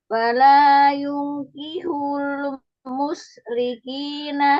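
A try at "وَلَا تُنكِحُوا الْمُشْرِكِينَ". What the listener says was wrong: Walatun kihu. Walatun kihu bukan yun. Walatun tungkihu.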